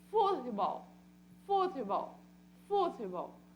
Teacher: Ou seja, a sílaba tônica, ela é paroxítona.